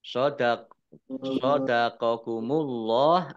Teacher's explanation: Shadaqakumullah, Allahnya dibaca tebal karena harokat di depannya fathah